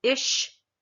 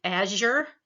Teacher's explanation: the palatal where your tongue goes up towards the soft palate again these are fricatives